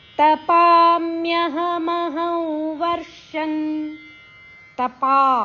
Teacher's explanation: ಪ ದೀರ್ಘ ಅಕ್ಷರ ಪ ಅಕ್ಷರದ ಮೇಲೆ ಆಘಾತ ಇದೆ ನಂತರ ಬಂದ ಸಂಯುಕ್ತಾಕ್ಷರ ಮ ಅರ್ಧ ಯ ಪೂರ್ಣಕ್ಷರ ತಪಾಮ್ಯಹ ಮಹಂ ಹ ಅಕ್ಷರದ